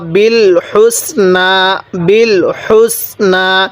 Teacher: এই হাটা উচ্চারণের সময় মুখ দিয়ে হালকা বাতাস বের করব